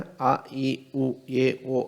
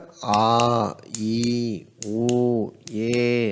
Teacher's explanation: குறில் எழுத்துக்கு அவன் கொடுத்திருக்கான் பாருங்க ஒரு மாத்திரை அளவு